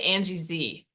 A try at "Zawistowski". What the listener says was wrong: Yeah, the S is in the middle, so you already missed that. It's Zawistowski, but yeah, that's close